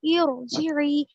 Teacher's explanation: خالی صرف ارجعی ہم بول رہے تھے تو حمزہ پہ جو زیر ہے وہ پڑھنے میں بھی آ رہا تھا ارجعی, لیکن جب ہم اسے رب سے ملا لیے تو دیکھیے آپ یہاں پر جو ہے بالکل خالی ہے, یہ اس کے اوپر کوئی حرکت نہیں ہے, نہ زبر ہے نہ زیر ہے, کچھ بھی نہیں ہے, اور وہ پڑھنے میں بھی نہیں آ رہا حمزہ.